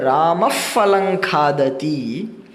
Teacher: जब राम फलं खादति, तो फ ऐसा जो आवाज निकलता है तो वो उपध्मानीय है